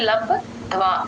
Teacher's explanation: ద కి మహాప్రాణం ఉందండి గమనించండి బ కింద ద ఒత్తు ప వ ఒత్తు రెండు ఉన్నాయి ద కి